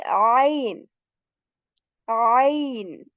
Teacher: That is from the middle portion of our throat, from where we make the sound of Ayn.